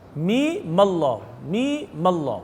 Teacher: پہلے میم پر غنہ ہے، دوسرے میم پر غنہ نہیں ہے